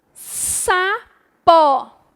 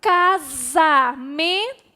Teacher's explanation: Na palavra sapo, a letra S tem um som de S. Já na palavra casamento, a letra S tem um som de Z.